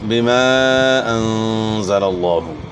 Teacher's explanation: الف مدہ کے بعد حمزہ دوسرے کلمے کے شروع میں ہے، تو یہ مد منفصل ہے، اس کو مد جائز بھی کہتے ہیں۔